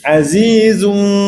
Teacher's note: Azizun zu yang zu tu keluarkan hujung lidah sikit dan mulakan suara di hujung lidah di mulakan suara di hujung lidah tu dalam keadaan lembut, perlahan dan tiada tekanan yang kuatlah. Azizu tu kena tekan sikit nak bunyi berdesir.